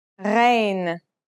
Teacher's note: Its sound is similar to the sound you make when you gargle, a sound that comes from a point deep in the throat.